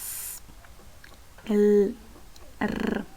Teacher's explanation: Ahora va a ser alveolar cuando son los que se articulan aproximando la punta de la lengua a los alveolos.